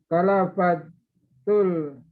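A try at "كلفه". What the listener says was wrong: Kalafahu, bukan kalafatu itu, nggak ada titiknya. Kalafahu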